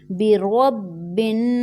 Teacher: جب ہم با کو نون مشدد سے جوائن کریں گے تو یہاں پر رول یہ ہے کہ جب بھی نون مشدد ہوگا تو وہاں غنہ ہوگا، یعنی ہم اس کی آواز کو اپنی نوز میں 1 سیکنڈ کے لیے ٹھہرائیں گے